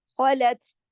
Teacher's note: خا جو ہے موٹا ہے، خ ایک ہی اور گلے میں خراش کی طرح پڑا جائے گا ، خلت جماؤ کے ساتھ